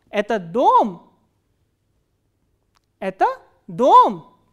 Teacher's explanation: it starts with the medium pitch and then it goes up on the word which contains the question in this case it's dome so it rises up and then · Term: intonation construction 3